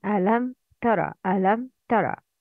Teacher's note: ميم is clear in pronouncing because it's followed by تا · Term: إظهار شفوي